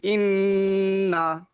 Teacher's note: নুনের উপর তাজদিদ আছে গুন্না করেও পড়তে হবে ওজিব গুন্না করে পড়তে হবে